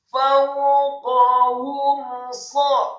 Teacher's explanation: mim mati atau sukun bertemu dengan huruf sad, maka hukum bacaannya adalah izhar syafawi, dibaca jelas, tidak boleh didengungkan atau diunnahkan. Fawqahum saffatin, ingat membacanya, sadnya dibaca tafkhim dengan posisi bibir bawah agak tertutup Dibacanya dengan mat fathah, dengan mat yang sempurna 4 sampai 6 harokat.